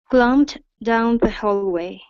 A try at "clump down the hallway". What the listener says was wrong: Okay, so make sure that you're only ending with a P sound and not a T. We don't want to say clumped, but only clump down, clump down.